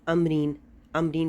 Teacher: چھوٹی سی میم آپ کو ڈلی ہوئی نظر آتی ہے، لیکن اگر یہ نہ بھی ڈلی ہو تو بھی آپ کو معلوم ہونا چاہیے کہ جب بھی نون ساکن کے بعد یا تنوین کے بعد با آئے گا تو پھر ہم نے وہاں پر میم پڑھنا ہے